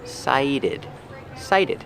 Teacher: Pronunciation, cited. The T makes a fast D sound.